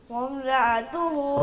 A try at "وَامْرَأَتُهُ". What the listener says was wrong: را کی آواز بھی موٹی کریں. وامرأتہ. رأتہ نہیں بولنا بیٹے، را کو الگ کرو، اتہ کو الگ کرو.